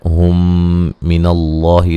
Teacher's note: مد اصلی ہے، میم ساکن کا ادغام ہے، ہم من اللہ لفظ اللہ کو موٹا پڑا جائے گا، پہلے زبر ہے اور مد اصلی ہے